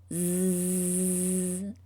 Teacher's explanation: Just like the letter S, the letter Z sound can keep going, which means it's a continuous sound